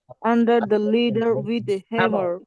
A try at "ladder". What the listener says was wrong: এটা ল্যাডার না তো, সরি লিডার না, ল্যাডার।